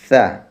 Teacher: যাদের সা হবে না তারা জিহ্বাটা একটু বের করে দিয়ে উপরের দাঁতের আগা দিয়ে হালকাভাবে, আলতোভাবে কামড় দিয়ে সা উচ্চারণ করবেন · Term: সা পাতলা